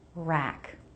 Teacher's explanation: Tight circle for the beginning R. Then lots of jaw drop. Rack. Drying rack.